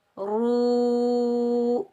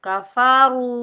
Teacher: रा को रा हरूफ मुस्ताला में से है तो रा को हम पुर पढ़ेंगे, मोटा पढ़ेंगे। रा के ऊपर पेश, रा को हम वाव साकिन के साथ मिलाएंगे।